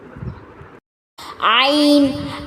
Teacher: عین جو ہے یہ وسط حلق کے درمیانی حصے سے ادا ہوتا ہے